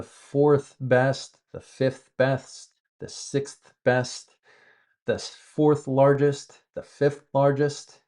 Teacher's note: we make that TH sound at the end of everything after third.